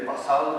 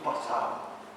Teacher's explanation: También existe en canario la pérdida de la letra D, porque decimos, en vez de pasado, decimos pasado.